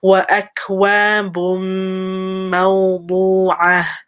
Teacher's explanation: So we have a dhamma, tanween, going into the meme. So make sure you give it a pause, give it a ghunna.